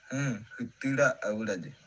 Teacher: You can also hear a little bit of the non-modal phonation in the end of the word retira.